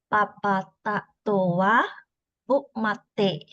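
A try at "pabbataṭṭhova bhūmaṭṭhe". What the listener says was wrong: This is actually te, not the. Papa tatova bumate. There's no T actually. No T here. We call it te. When you see this dot under the letter, that means te.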